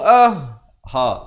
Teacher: ha, makhrajnya di bawah pangkal kerongkong ini.